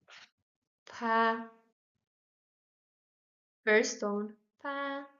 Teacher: like the English P, but we make air flow through our lips